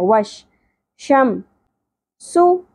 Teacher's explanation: وش پہلے شین کو واو کے ساتھ زبر کے ساتھ جوڑنا ہے. وش شم سو سین سیٹی کے ساتھ ہوگا، پیش کو زیادہ نہیں کھینچنا، ایک ہی حرکت ہے